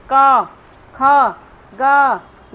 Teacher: ये कंठ से निकल रही है आवाज